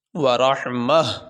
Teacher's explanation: اگر وقف کیا جائے اس گول تا پہ، تو اس کو وقف کی صورت میں یہ ہا پڑھا جائے گا